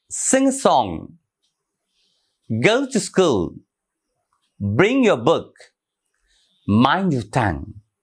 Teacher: Stressed, unstressed, and stressed.